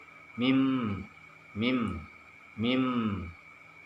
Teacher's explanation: Suara mim keluar dari bibir kita, bibir yang terkatup. Mim. Ada dengungnya di situ, tapi tidak sampai kita itu membunyikannya sampai mim. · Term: Huruf mim